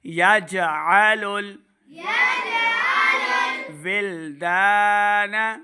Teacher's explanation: आइन को भी सही तलफ़्फ़ुज़ के साथ पढ़ना है, हमज़ा की आवाज़ नहीं आनी चाहिए, यजअलुल नहीं करेंगे, बल्कि आइन को सही क्लियर तलफ़्फ़ुज़ के साथ अदा करना है।